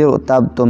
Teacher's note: ان ارتبتم میں بھی را سے پہلے زیر ہے، لیکن پچھلے کلمے میں ہے، اس لیے را کو پر پڑھیں گے، باریک نہیں پڑھیں گے۔